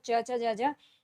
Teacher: च ज ये तालव से संबंधित है तालव्य